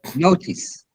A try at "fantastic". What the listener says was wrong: no, ic, not ice, like fantastic, fantastic, uh, bulimic, academic. You stress the syllable before ic. uh Elastic, energetic.